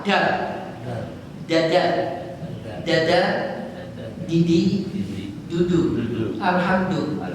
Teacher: Kalau dal keluar dari ujung lidah kena pangkal gigi bagian atas. Nah, ya kenakan lidah.